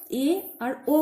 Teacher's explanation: এ আর ও উচ্চারণ করার সময় অর্ধ সংবৃত হয়ে যায়, অর্থাৎ খুব একটা ছোট হয়ে থাকে না, আবার খুব মুখের যে ঠোঁটের অবস্থানটা, মুখের ভিতরের যে মুখগহ্বরটা রয়েছে, সেই গহ্বরের মধ্যে ফাঁকটা খুব একটা কমও হয় না, খুব একটা বেশিও হয় না। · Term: অর্ধ সংবৃত স্বরধ্বনি